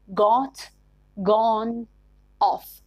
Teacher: british english has one more vowel than american english this is rounded short o used in words like got gone off